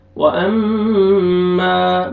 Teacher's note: मीम मुशद्दद गुन्ना करेंगे, अलिफ मद्दा अलिफ पर फतहा, मीम को अपने खींचना है।